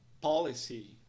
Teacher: Nós vemos um apóstrofe logo após a primeira sílaba, indicando que ela é pronunciada mais alongada em um tom mais alto.